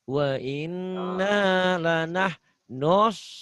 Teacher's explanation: F-nya ditahan ya sedikit.